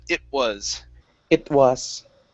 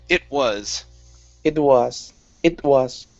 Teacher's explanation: So we would really need to use a stop T saying it was.